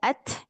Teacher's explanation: Jadi kita simpan tangan kita depan bibir ketika mengucapkan at ada angin. Itu namanya alhams atau jarayanun nafs ya.